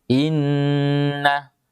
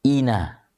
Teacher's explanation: Terasa lebih panjang suara nun bertasydid dibandingkan tadi dengan nun yang tidak bertasydid. Teorinya mengatakan ina 2 harakat.